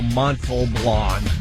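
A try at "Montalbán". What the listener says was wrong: You got to get that L in there. Montalban. Yeah, Montalban.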